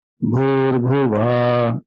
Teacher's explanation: Not Bhur Bhuva. Bhur Bhuva. Va goes down, not Bhu.